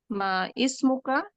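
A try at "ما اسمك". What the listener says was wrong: Langsung kan bacanya Bu, tanpa baca hamzahnya.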